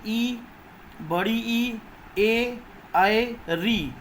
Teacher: इन शब्दों को बोलेंगे तो जीभ का आगे वाला भाग ही क्रिया करेगा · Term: अग्र स्वर